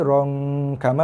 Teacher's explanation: Sekali lagi kita cuba Jaga 4 harakat, ada dengung ifa sini rom kama, bunyi di rongga hidung.